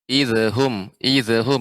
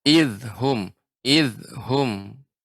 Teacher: perhatikan pada kata idhum ya, tidak boleh dipantulkan zalnya. Idhum, idhum ini kurang tepat.